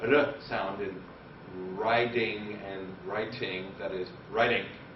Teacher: that sound seems to be a member of both the T and the D phoneme